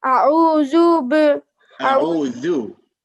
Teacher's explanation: The tip of your tongue should be between your teeth when you say أعوذ.